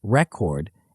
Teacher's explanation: When the stress is on the first syllable, record, it's a noun referring to documentation or achievement. When the stress is on the second syllable, record, it's a verb meaning to document or register.